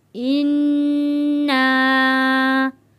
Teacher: نون کے اوپر تشدید ہے، یہاں پہ ہم غنہ ادا کریں گے۔ انا، الف سے پہلے زبر ہے، حروف مدہ ہے، اس لیے ہم اس کو ایک الف کے برابر کھینچ کر پڑھ رہے ہیں۔